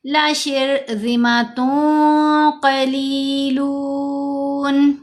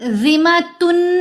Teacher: لَشِرْذِمَةٌ قَلِيلُونَ، ذِمَةٌ نہیں کرنا، تا 2 پیش تن میں جو نون کی آواز ہے اس کو ہم نے ناک میں چھپا کر پڑھنا ہے، کیونکہ اخفا کا قاعدہ ہے۔